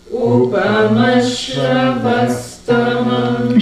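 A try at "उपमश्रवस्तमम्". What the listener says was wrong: Shra goes up. Upamashravastamam. U also goes up. Upamashravastamam. Yeah, the U did not go up, right?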